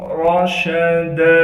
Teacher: دال پر جب وقف کریں گے پھر دال کو ایک الف کی مقدار کھینچ کر پڑھیں گے کیونکہ دال پر دو زبر ہے اور دو زبر کے بعد الف مدہ موجود ہے۔